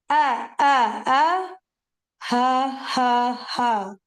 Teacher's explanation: Hamza, ha from the deepest part